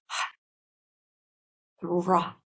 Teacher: it's a breathy H that comes from the belly through the diaphragm, from the contraction of the diaphragm, the rah. And that is like the breath of spirit, spirit being breathed into the M sound.